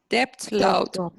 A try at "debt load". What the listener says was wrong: B is not pronounced. Debt. Debt load. Debt load, yes. Debt load.